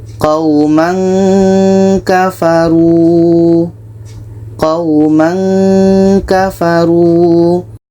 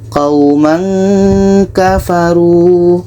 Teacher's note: Ketika kita baca tanwin ini, kita sudah merasakan huruf ka. Qauman kafaru. Sehingga seperti ada bunyi eng di sini.